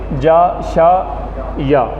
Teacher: زبان کا جو بیچ ہے اوپر کے تالو سے لگتا ہے